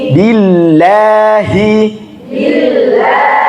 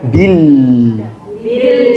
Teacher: lam dia lafzul jalalah cuma sebelumnya kasrah maka dia tipis